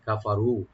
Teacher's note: কাফ open, ফা open, র একটু ডিপ করে একালিফ টানবেন